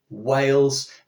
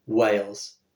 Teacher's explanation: that is simply a difference between the voiced Wales and the unvoiced whales